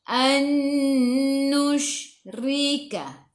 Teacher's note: Ra baris bawah kena baca dengan nipis, senyum.